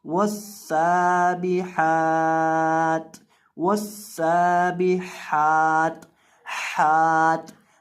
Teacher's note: ہا کو بیچ حلق سے ادا کریں گے